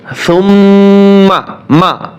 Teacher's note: মিমে টান দেওয়া যাবে না সুম্মা তাড়াতাড়ি উচ্চারণ করতে হবে কিন্তু গুন্না আদায় করতে হবে